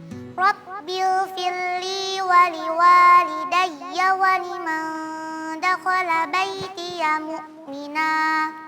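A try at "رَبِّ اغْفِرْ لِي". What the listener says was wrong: Memang kalimat ighfirli karena makhraj huruf lam berdekatan dengan makhraj huruf ra, maka sering terjadi ra-nya tidak terdengar seperti yang dibaca tadi. Rabbighfirli. Ya, seharusnya Rabbighfirli ya, karena memang makhraj huruf ra dengan makhraj huruf lam berdekatan. Tadi ketika tampil huruf ra-nya sama sekali tidak terdengar.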